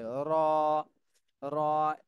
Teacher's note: জিহ্বার আগার পিঠ জিহ্বার আগার পিঠ উপরের তালুর সঙ্গে লাগবে